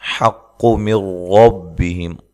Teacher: یہاں نون ساکن کا ادغام ہے لیکن بلا غنہ ہے، ٹھیک ٹھیک ہے جی، غنہ نہیں کرنا.